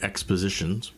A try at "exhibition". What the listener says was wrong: No P. There's no P.